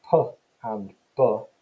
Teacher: So if we think about p and b, both of those are bilabial plosive sounds. Bilabial, because you're producing it through both of your lips.